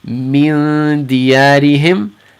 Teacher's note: dal is in the front, we're going to keep our ikhfa kind of light near the front of the mouth.